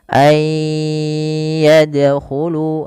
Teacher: Maka cara membacanya sebagaimana ayudkaro yaitu masukkan nunnya kepada huruf ya dan bunyi nunnya hilang kemudian terdengar hanya bunyi yanya saja dan ditahan sepanjang dua harakat